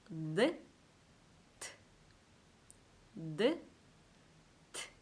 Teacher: 트에서는 소리 없이 바람만 새어나오는 소리가 들리는데요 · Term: 무성음 알파벳